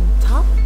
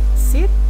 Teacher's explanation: which is voiced the fourth one we have alveolars these are sounds formed with the front part of the tongue on the alveolar ridge